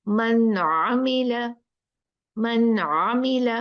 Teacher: यहाँ पर नून को साफ पढ़ना है, कुछ गुन्ना गुन्ना गड़बड़ नहीं करनी